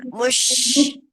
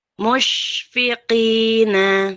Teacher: Ya, memang jangan ragu-ragu ya, karena dia ada sifatnya tafashi, yaitu menyebar dengan kuat, jadi sebarkan saja gitu ya.